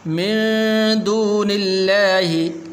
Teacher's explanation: لفظ اللہ کو پر نہیں کرنا کیونکہ اس سے پہلے حرف کے نیچے زیر ہے، تو اس لیے باریک کر کے پڑھنا ہے